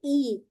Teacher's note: ای کو ہم نے حمزہ کو اقصا الحلق سے ادا کرنا ہے